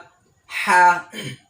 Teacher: হা উচ্চারণ করার সময় হলকের মধ্যখান, অর্থাৎ গলার মধ্যখান থেকে হা উচ্চারণ হবে। গলার মধ্যখান, শেষও না, শেষও না, শুরুও না, বরং গলার মধ্য থেকে হা উচ্চারণ হবে।